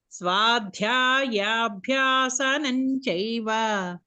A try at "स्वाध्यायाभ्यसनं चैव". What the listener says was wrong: No, there's no swadhyayabhya. Swadhyayabhyasanam chaiva.